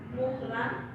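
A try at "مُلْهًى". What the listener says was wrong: Mulhan, jangan kebalik, Bu. Mulhan, mulhan.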